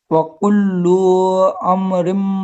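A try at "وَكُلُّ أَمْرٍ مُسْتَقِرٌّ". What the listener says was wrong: سب سے پہلے تو وکلو, اس کو کھینچے کیوں؟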